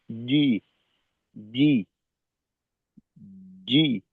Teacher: মাখরাজ থেকে আওয়াজটা একটু শক্তভাবেই বের হবে। যেখানে বাতাসের কোন সম্পর্কই নেই। আর আওয়াজটা একবারে আসবে। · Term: জিমের উচ্চারণটা